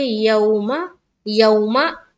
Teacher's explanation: जब भी वाव साकिन से पहले ज़बर आए तो वहां पर वावलीन का कायदा होता है और वावलीन को हम नरमी के साथ जल्द अदा करते हैं, ठीक है, और मारूफ का भी ख्याल रखना है।